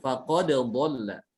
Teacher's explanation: Dal dengan dot ini beda makhraj ya. Kalau dal di ujung lidah ditempelkan dengan gusi gigi seri atas, dengan dot itu ada di tepi lidah bagian dalam ya, ditempelkan dengan gigi geraham atas.